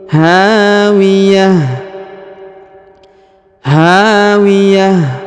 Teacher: huruf ha dibaca panjang dua harakat karena di depannya terdapat Alif